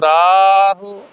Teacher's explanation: ਰਾਹ ਨੂੰ ਲੰਮਾ ਲੈ ਜਾਓ ਹੂ ਨੂੰ ਛੱਡ ਦਿਓ